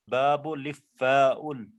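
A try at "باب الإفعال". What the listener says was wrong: और आइन मत करना. हाँ, आइन मत करना. ना ना ना, जरूरत क्या है, जरूरत क्या है, खाम का गले में तकलीफ होगी.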